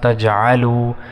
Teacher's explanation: وا کو 1 سیکنڈ تک کھینچیں گے